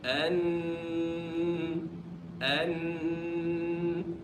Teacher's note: the noon is not fully from the mouth and it's not fully from the nose